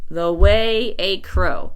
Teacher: the syllables this happens to be I Amic so that means the is unstressed and way is stressed